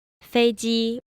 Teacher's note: notice that the second syllable, even though it's still first tone, it's very slightly lower. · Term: 1-1 combination